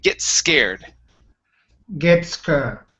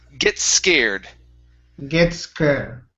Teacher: So here, you said gets scared. Okay, so what you want to do is combine those S sounds. So instead of pronouncing 2 S's, only say 1.